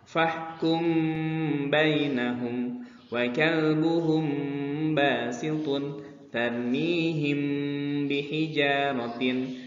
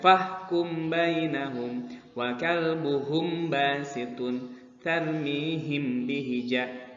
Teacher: Dengan kata lain, menurut istilah ilmu tajwid, ikhfa artinya menyamarkan bacaan mim sukun saat bertemu dengan huruf ba. Hurufnya ingat hanya ada satu, yaitu ba saja. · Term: ikhfa syafawi